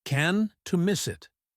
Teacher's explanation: The T in can't is usually stronger than the T in can to show the negative, but in can't miss, the T blends into the M